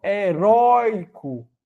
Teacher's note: heroico é o ditongo aberto Oi na penúltima sílaba na posição da paroxítona Então perdeu o assento também então já tá errado por heróico